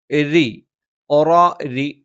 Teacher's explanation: രി എന്ന് ഉച്ചരിക്കുന്ന സമയത്ത് നാവിൻ്റെ മധ്യഭാഗം മുകളിലേക്ക് ഉയരില്ല, പരന്നാണ് നിൽക്കുന്നത്